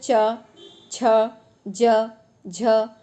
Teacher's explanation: तो आपकी जो जिह्वा है ये ऊपर के तालु से स्पर्श होती है, तो इसीलिए हम इसे बोलते हैं तालव्य व्यंजन।